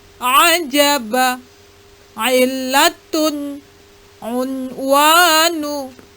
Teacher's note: Bunyi huruf ain adalah seperti bunyi hamzah, namun lebih maju ke tengah tenggorokan.